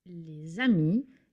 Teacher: la liaison with S, the letter S, creates a new sound. The sound is Z, as in Z. We already saw the example les amis, and you can hear that I'm not saying les amis, but les amis.